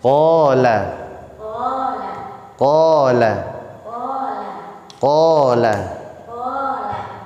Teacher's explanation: tempatnya di lidah atau al-lisan, bagian paling belakang pangkal lidah, tidak boleh mencucu · huruf qaf memiliki sifat isti'la atau tebal.